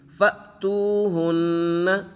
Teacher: حمزہ کے اوپر جب ساکن ہو جزم ہو تو اسے جھٹکے کے ساتھ پڑھتے ہیں